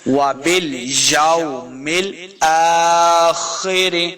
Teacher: حمزہ کے اوپر کھڑی زبر ہے، اس کو دو حرکات لمبا کریں گے اور خا کو ہم نے موٹا پڑھنا ہے